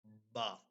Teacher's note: دونوں ہونٹوں کی گیلی جگہ ہے وہ ملائیں گے آپس میں